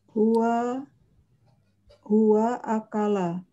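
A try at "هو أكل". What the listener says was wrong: Oke, benar.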